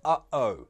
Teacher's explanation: in the middle of uh-oh, where your throat closes, stops the airflow, stops the sound coming out. That's a glottal stop.